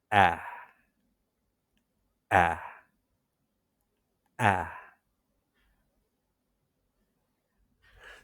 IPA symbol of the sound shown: æ